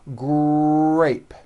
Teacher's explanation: the R sound is the strongest sound of the blend and your lips often come forward before you even say the word. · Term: R blends